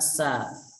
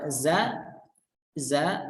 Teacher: Za, sa itu memiliki makhraj yang sama namun memiliki sifat yang berlawanan. Sa itu memiliki sifat hamas, sedangkan za itu memiliki sifat jahar.